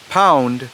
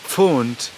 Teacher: P remains P in the West Germanic dialects or languages, but it shifts to PF in Old High German. So for example, we have pound, but we have Pfund in actually most of the Old High German dialects, because that P does not shift in Middle Franconian.